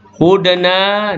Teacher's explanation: dal yang sukun qalqalah sughra berdetak kecil